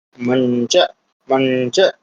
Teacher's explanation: अनुस्वार के स्थान पे लगा दिया हमने आधा वर्ण। उसी वर्ग का पंचमाक्षर